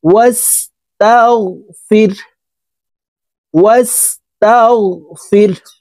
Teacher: হাকে ওয়াকফের ক্ষেত্রে সাকিন করে ফেলবো